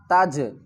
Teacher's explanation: سکتے. فلا تجعلوا، فا زبر فا، لام الف زبر لا، فلا، تا کو جیم سے ملائیں گے، جیم کے اوپر قلقلہ کریں گے ، تج، تا جیم زبر تج، عین زبر ع، تجع، لام